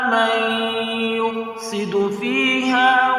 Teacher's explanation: من یفسد، نون ساکن ہے، نون ساکن کے بعد حروف یرملون میں سے یا آ رہا ہے، لہذا یہاں ادغام یرملون مع الغنہ ہوگا، ایک الف کی مقدار غنہ کر کے پڑھیں گے